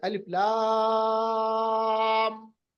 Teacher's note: आप ऐसे भी याद रख सकते हैं कि जब भी आप मद देखेंगे हरूफ मुक़त्तआत पर, उस मद को हम मद लाजिम कहेंगे। और मद लाजिम को लंबा करना, कितना लंबा करना है? 6 से 8 अलिफ तक, यानी बहुत लंबा। جتنی آپ کے اندر طاقت ہے، جتنی آپ کے اندر سانس ہے.